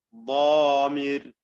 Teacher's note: ഗാലിബ് എന്നതിലെ തഫ്ഖീമിനേക്കാളും കഠിനമായ തഫ്ഖീമാണ് മുത്ബഖായ ഇത്ബാഖോടുകൂടി ഒട്ടിച്ചു വെച്ചുകൊണ്ട്, നാവും അണ്ണാക്കും ചേർത്ത് ഒട്ടിച്ചു വെച്ചുകൊണ്ട് ഉച്ചരിക്കുന്നതായ ദ്വാദിലുള്ളത്